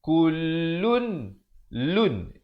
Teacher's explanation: Di sini hukum izhar halqi. Izhar halqi jelaskan saja lam tanwinnya tu lun. Jangan panjang, jangan.